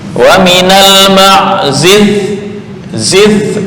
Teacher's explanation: Itu agak tertahan semua nih. Zi lepas ya, sifatnya adalah lawan lawan syiddah ya, berarti rokhwah.